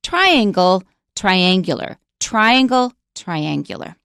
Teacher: right but a lot of people say triangle and that's wrong we don't stress the second syllable we stress the first syllable